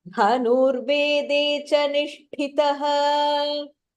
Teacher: The dha and the tha, Mahapranah. Nish also is Mahapranah.